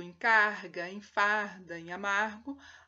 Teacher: No entanto, em gordo, em carga, em farda, em amargo, a consoante que segue a fricativa é sempre vozeada. Por isso, fica uma fricativa velar vozeada.